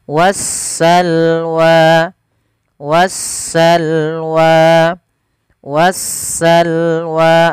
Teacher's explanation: jelas sedangkan di lam alif lam syamsiah yaitu suara sinnya Maaf suara Alif lamnya diidgamkan ke huruf Sin sehingga sinnya berharakat tasdid